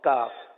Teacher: اور کاف یعنی جو باریک پڑھا جاتا ہے وہ زبان کی جڑ اور تالو کا سخت حصہ